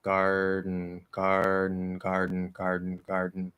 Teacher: We get this sort of weird thing that happens in the nose because we're holding that position there, but we're stopping the D and then letting the N through after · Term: stop D